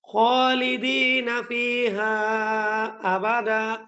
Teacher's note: এই ফিহার মধ্যে ৩ আলিফ লম্বা হবে